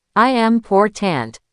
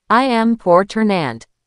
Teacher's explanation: The last syllable almost vanishes. It becomes a schwa.